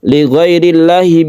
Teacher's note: ada lam jalalah yang kita baca tarqiq atau tipis karena sebelumnya ada kasrah